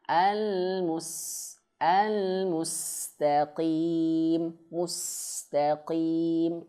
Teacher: huruf qaf itu harus dia tebal, tapi ketebalannya jangan berlebihan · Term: tafkhim khafifi